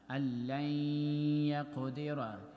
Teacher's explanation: أَيَحْسَبُ أَلَّن يَقْدِرَ, when we connect lam with ya, so in between there is noon, we will have idgham of noon sakin in ya